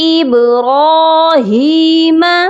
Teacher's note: با پر قلقلہ کریں گے اور را کو ہم موٹا کریں گے